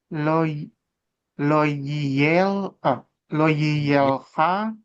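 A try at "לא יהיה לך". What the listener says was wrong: Koreksinya Yihyeh dan Lehanya ini dipisah ya. Dipisah ya suku katanya karena ya lo Yihyeh Leha jangan digabung ya. karena di sini ada tanda mapek ya. Ini penghubung antar kata sih memang, tapi dia jadi suku katanya terpisah. Ya, lo Yihyeh Leha ya Elohim Acherim Alpanai.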